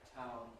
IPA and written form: taʊn (town)